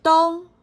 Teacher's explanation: Raise your pitch and keep it level. It's similar to Chinese the first tone, but slightly slower.